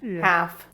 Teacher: in neither case do we pronounce the l